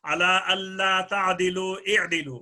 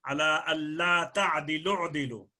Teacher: یہاں پر واو جی مدہ اجتماع ساکنان علی غیر حدہ کی وجہ سے حذف ہوگی، لام عین کے ساتھ ملے گا